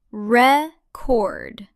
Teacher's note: record is a verb, and the stress is on the second syllable.